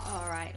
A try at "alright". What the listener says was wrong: You say like alright instead of alright. Like, you say it like there's an R, not an L.